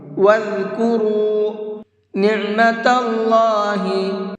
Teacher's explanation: اللہ کے نام کو منہ بھر کے پڑھیں گے، یعنی کہ پر کر کے پڑھیں گے، اس لیے کہ اللہ کے نام سے پہلے یہاں پر زبر ہے، اور اللہ کے نام سے پہلے زبر ہوتا ہے تو اس اللہ کے نام کو منہ بھر کے پڑھتے ہیں۔